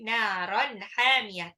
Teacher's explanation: Tanwin ketemu ha-nya nggak boleh ditahan karena dia izhar, jelas. Hamiyah, ha-nya 2 harokat.